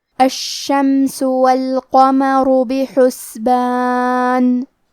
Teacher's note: کلمت الشمس میں حرف الشین کو تشدید سے پڑھیں گے